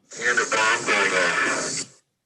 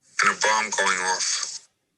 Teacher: the bomb threat caller used the same vowel in bomb and off, as the Atlas shows for speakers from Eastern New England · had distinct phonemes for bomb and off, as the atlas shows for New Yorkers.